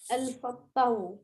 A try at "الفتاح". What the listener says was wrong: Wrong. Yeah, it's wrong. It's wrong. This is ta fatha, sir. Ta fatha and alif. Ta fatha and alif is ta. Not fatahu.